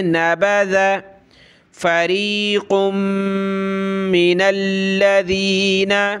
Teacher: نبذ دال پہ زبان نکالیں